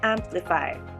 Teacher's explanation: the stress is in the first syllable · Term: primary stress